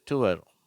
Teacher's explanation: உவ அப்படிங்கறது உல ஆரம்பிச்சு அல முடியுது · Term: கலப்பு உயிரோசை